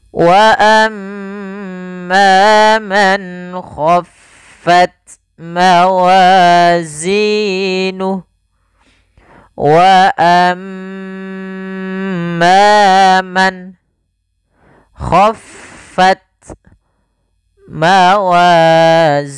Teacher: ada mim tasydid, bacaan gunnah, yaitu suaranya menahan dulu suara nya sepanjang 2 harakat